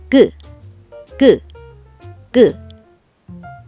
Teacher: 혀를 목구멍으로 당겨서 목구멍을 막고 있을 때의 혀 모양이 그처럼 생겨서 혀의 모양을 본 그를 기억 모양으로 쓴답니다. 그 하고 말할 때는 혀가 목구멍을 막고 있다가 혀를 아래로 놓으면서 소리 내죠. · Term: 첫소리